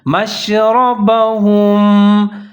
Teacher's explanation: را کو آپ نے موٹا کر کے پڑھنا ہے، اس کے اوپر زبر ہے